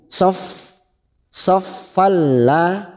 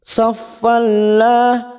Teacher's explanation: idgham bila guna, hanya masuk tanpa ditahan lama-lama, tanpa mendengung. Saffalla, lam alifnya 2 harokat kita panjangkan.